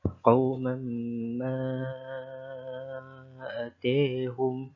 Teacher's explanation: untuk mad munfasil dibaca dengan isbah, iaitu 6 harakat